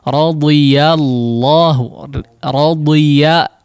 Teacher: Ya difathahkan dengan sempurna ya dan tidak ditebalkan.